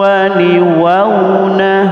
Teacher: Ini dampak dari tanwin ketemu waw, maka dia namanya idgham, melebur jadi satu, kemudian ada gunnahnya. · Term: idgham bi gunnah